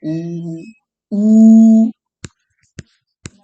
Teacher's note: ऊ तो दोनों होठ सटेगा